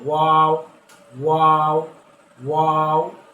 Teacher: 15 নম্বর মাখরাজ দুই ঠোঁট গোল করে সামান্য খোলা রেখে একটি হরফ